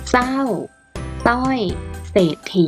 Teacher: ออกเสียงเฉพาะพยัญชนะต้นตัวแรกเพียงตัวเดียวเท่านั้น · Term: อักษรควบไม่แท้